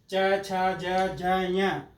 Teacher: अपनी जीवा तालु को स्पर्श कर रही है इसलिए इनको तालव्य वर्ण बोलते हैं